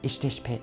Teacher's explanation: the voice consonant be in the interrogative particle and in the negative suffix become the voiceless pe if it adds to a voiceless consonant